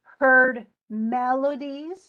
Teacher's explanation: Melodies is definitely stressed on the first syllable and the the secondary stress is it with these Melodies are